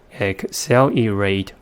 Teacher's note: And the vowel in the last syllable says it's a long sound because of the silent final E. And the vowel in the third syllable reduced to the first schwa sounds because it's in the unstressed syllable